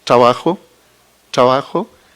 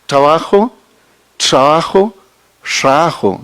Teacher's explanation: puede ir disminuyendo el grado de oclusión y aumentando el grado de fricción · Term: prominencia fricativas